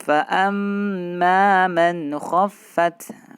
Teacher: Kha itu huruf halqi, berarti dia idhar halqi. Ya, man khaffat idhar tidak boleh kita samar-samarkan, harus jelas dan tidak boleh kita tahan.